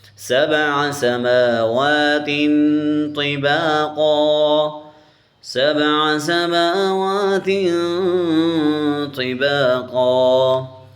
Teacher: میم کے اوپر بھی کھڑی زبر ہے، واو کے اوپر بھی کھڑی زبر ہے، تو ہم ان دونوں کو کھینچیں گے. سین کے اوپر حرکت ہے اور تا کے اوپر تنوین ہے، ان دونوں کو نہیں کھینچیں گے